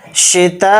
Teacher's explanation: یہ جو تا کے اوپر مد ہے یہ مد متصل ہے، یہ 4 الف کی مقدار کھینچ کر پڑھا جائے گا تا کے ساتھ. اس طرح سے تا کو کھینچیں گے، شتائی اتنا کھینچ کر پڑھیں گے.